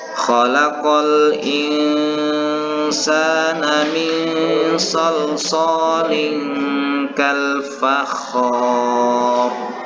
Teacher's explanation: Kemudian didahului huruf yang berharokat fathah, yaitu huruf kha yang berharokat tasdid dan fathah. Kemudian ro-nya ini dibaca sukun atau dimatikan dikarenakan akhir ayat. Maka ro-nya ini dibaca secara tafkhim atau tebal.